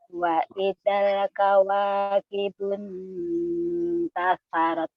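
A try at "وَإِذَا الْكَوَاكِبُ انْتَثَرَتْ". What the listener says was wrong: Ayat 2-nya lidahnya jangan langsung ditaruh di huruf taknya. Nanti dia jadi huruf N sama T. Kawakibunta, bunta. Harusnya bunta, bunta.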